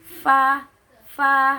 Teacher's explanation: Nah, makhrijul huruf fa itu ada pada syafatain, ada pada bibir. Jadi makhrajnya keluar antara ketika bibir bawah bertemu dengan ujung gigi seri atas.